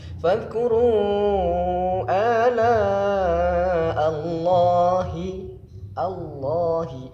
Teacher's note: Ini lafaz jalalahnya dibaca tafkhim atau tebal karena lafaz jalalah, lam jalalah atau lafaz Allahnya didahului dengan harokat fathah.